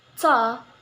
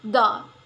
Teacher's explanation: Sound ta is a voiceless alveolar stop sound, and the sound da is a voiced alveolar stop sound.